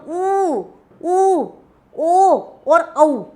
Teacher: ऐसे स्वर जिनका उच्चारण करते समय होंठ गोल रूप धारण कर लेता है उसको बोला जाता है वृत्ताकार